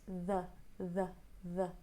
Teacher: it's unstressed and it's very neutral it's got the schwa sound